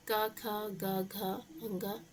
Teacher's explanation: क, ख, ग, घ जिनको कंठ से बोलते हैं। जो जीभ का पिछला हिस्सा कंठ होता है उसको छूता है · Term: कंठ व्यंजन